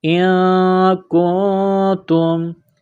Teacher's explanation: نون ساکن کے بعد کاف ہے، غنہ کریں گے، آواز ناک میں چھپائیں گے